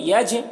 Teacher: جیم میں قلقلہ کرنا ہے، جیم میں آواز ٹکرائے گی اپنے مخرج سے